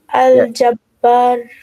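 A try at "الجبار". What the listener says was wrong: Correct. Al-Jabbar. Yes, good.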